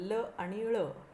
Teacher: स्पर्श व्यंजनांच्या वेळेप्रमाणे ही अडवणूक पूर्ण नसते. जिभेच्या दोन्ही कडांच्या बाजूंनी हवा एकसारखी बाहेर येत राहते. उदाहरणार्थ ल आणि ळ ही पार्श्विक व्यंजने आहेत.